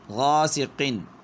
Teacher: ناک میں آواز نہیں گئی کیونکہ آگے حرف حلقی ہے تو ظاہر ہو گئی آواز۔ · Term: اظہار حلقی